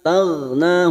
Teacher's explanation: huruf ghain bukan qalqalah, kita tahan jangan sampai memantul. Taghna, na 2 harokat kita panjangkan.